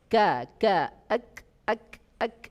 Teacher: masih di pangkal lidah, di depan qaf sedikit, ya, menyentuh langit-langit atas yang berbentuk daging plus tulang, karena dia semakin maju ke depan. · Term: kaf